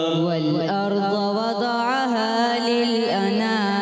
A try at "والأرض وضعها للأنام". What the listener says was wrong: ضاد کو اور زیادہ پر کریں گے۔ والأرض وضعها للأنام،